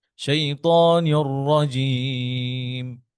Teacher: আহ, أعوذ بالله من الشيطان الرجيم রটাকে بسم আরেকটু ধরেন, যেহেতু রটা সাদ্দা আছে, রটা একটু মোটা করেন।